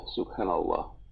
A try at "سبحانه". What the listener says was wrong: سبحانه not subhanallah